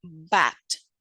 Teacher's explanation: It is voiced, bilabial, stop, such as in bat.